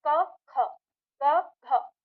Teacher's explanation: जैसे हम बोल रहे हैं हमारे पास पहला है वर्ण, हमने जैसे क ख क घ, तो आप अब बोल कर देखो कि जब हम बोलते हैं क और उससे बोलते हैं फिर ख, तो क की तुलना में ख में हमें ज्यादा हवा निकलती है मुंह से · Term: महाप्राण